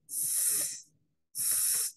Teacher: Usted escucha una especie de silbido que sirve para identificar entonces el tipo de sonido. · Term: sibilante